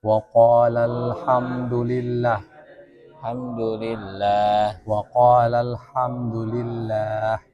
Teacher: Jadi kalau ada lafaz Allah pasti panjang tengahnya.